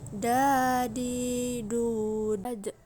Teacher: dalam keadaan mati huruf da terdengar memantul